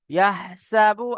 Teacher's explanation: এটা হ্যাঁ, এটা ছিল ছোট হা, আর এটা হলো বড় হা। তো এখানে এই হাটা কণ্ঠনালীর মাঝখান থেকে বার হবে।